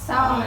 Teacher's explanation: มีสเสือควบกับรเรือแต่เราจะอ่านออกเสียงเพียงแค่สเสือนะคะในพยัญชนะตัวแรกเท่านั้นค่ะ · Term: คำควบกล้ำไม่แท้